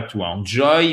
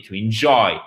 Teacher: Accent tonique sur la seconde syllabe, OK?